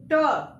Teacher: तो ट वर्ग जो हमारे होते हैं वो हमारे मूर्धन में जाके टकराते हैं